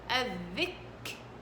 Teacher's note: كاف ساكنة على وضع الساكن، وضع الساكن، بجيب شدة ويتبعها الهمس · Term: شدة وهمس